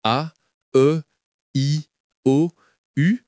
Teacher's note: Des voyelles orales et des voyelles nasales. Les voyelles orales comme A, E, I, O, U sortent directement de la bouche sans passer par le nez.